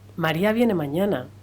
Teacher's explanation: la entonación exclamativa que se caracteriza por tener un tono más alto que las anteriores Y unas inflexiones más elevadas y variadas eh comporta muchos significados expresivos y emocionales y suena eh Como